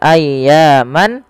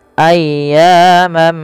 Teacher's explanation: maka ketika ada tanwin bertemu dengan huruf mim yaitu langkahnya adalah masukkan tanwiinnya kepada huruf mim dan diganti bunyinya awalnya ayyaman menjadi ayyamamma ayyamam ma'dudah Ya ditahan dan diganti suaranya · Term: Idgham